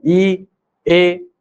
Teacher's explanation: ऐसे वर्ण जिनका उच्चारण जिह्वा के सामने वाले भाग से हो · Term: अग्रस्वर